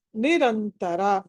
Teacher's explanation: ర తర్వాత అనుస్వారం ఉంది తర్వాత త ఉంది కాబట్టి నకారం అక్కడ